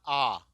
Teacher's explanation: आ में जितना मुंह खुलता है उतना किसी भी स्वर के उच्चारण में नहीं खुलता